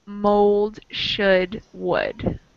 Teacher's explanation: Mold, we pronounce the L. In should and would, we do not, it's silent.